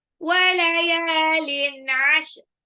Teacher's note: Tanwin ketemu ain ini dibaca jelas ya. Dibaca jelas izhar.